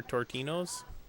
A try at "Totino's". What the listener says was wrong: Tortinos? What? Where'd you get the R from? Totinos.